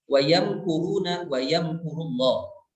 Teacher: mim itu adalah keluar dari syafawi ya, dari dua bibir, maka membaca mimnya itu adalah harus jelas keluar dari makhrajnya tanpa ada gunnah tambahan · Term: izhar syafawi